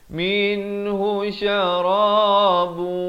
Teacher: Minhu syarabu, idgham bi gunnah di sini. Syarabun jadi bu, masuk beserta dengung 2 harakat